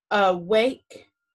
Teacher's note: so when a is open and not accented it usually makes the schwa sound remember uh awake in the schwa is that upside down e